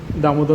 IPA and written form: ˈdʌmoˌdaː (Damodar)